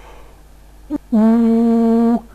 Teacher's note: a vowel that is produced with a back quality, where the tongue is extremely high in the mouth. The result is something like ooh.